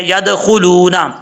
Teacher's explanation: لام کے بعد واو مدہ ہے، ایک الف کی مقدار لمبا کر کے پڑھا جائے گا